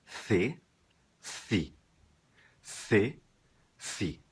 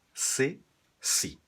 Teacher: na Espanha em 90% do território espanhol soa com a língua entre os dentes